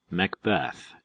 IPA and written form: məkˈbɛθ (Macbeth)